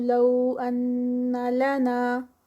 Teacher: ان یہاں پر غنہ ہے، نون مشدد